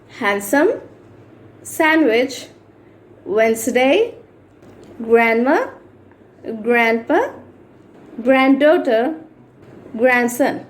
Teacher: వీటన్నిటికీ డి ఉన్నప్పటికీ వి should not pronounce